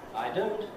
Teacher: here I'm meant to go up to a high pitch, a relatively high pitch, for the syllable don't.